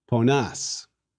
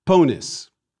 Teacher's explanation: all we did was substitute a long A for the short I